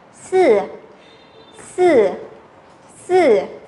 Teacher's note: Số 4, thanh 4 đúng không nào? Chúng ta phải xuống hẳn nào.